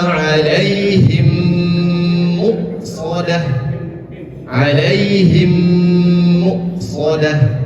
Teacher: mim sukun bertemu dengan mim itu hukumnya adalah idgam mim cara membacanya adalah dengan ditahan dua ketukan